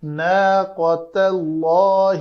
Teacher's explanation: تا کو پتلا رکھ کے اس میں جلالہ کے لام کو پر کرنا ہے